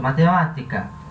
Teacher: o que são palavras as trufas são as proparoxítonas acento é a sílaba tônica é a antepenúltima né e a terceira do final para o início